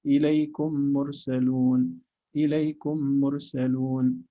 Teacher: you are making each meme have just one unit of reading with clear meme. You're clarifying each meme, that's idhar.